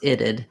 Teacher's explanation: It's a T, but we use it as a flap.